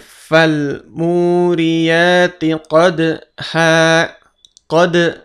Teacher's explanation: Qadhan karena di akhir ayat atau berhenti, maka kita baca panjang. Jadi 2 harokat, an-nya berubah menjadi a panjang.